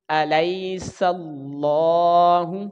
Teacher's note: ہا کے اوپر پیش ہے, اس کو جلدی پڑھیں گے اور لام کی لمبائی ایک الف کے برابر ہوگی